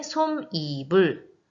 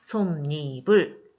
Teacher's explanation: 앞에 있는 미음이 뒤에 모음으로 시작되는 이로 만나서 니은이 첨가가 돼서 발음이 되네요. 솜니불 첨가입니다.